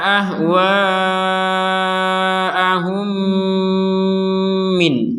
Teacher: kita berhenti di MIN akhirnya nun sukun enggak ketemu sama ba karena enggak ketemu atau tidak digabung sama ba maka Nun sukunnya tetap dibaca jelas